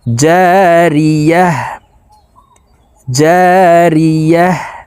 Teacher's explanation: গোল তাও ওয়াকফুর ক্ষেত্রে হার উচ্চারণ করতে হবে এবং হা কে সাকিন করে ফেলবো